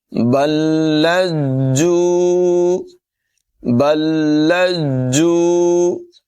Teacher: رزقہ بل لجوا، بل لجوا، یہاں پر با کو لام سے ملانا ہے اور پھر لام کو جیم سے ملانا ہے، ذرا جم کر رک کر ادا کریں گے۔